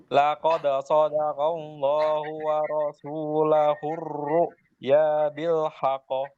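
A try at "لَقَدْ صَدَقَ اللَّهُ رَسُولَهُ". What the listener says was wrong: Enggak ada wanya. Rasul. Ini enggak ada wanya.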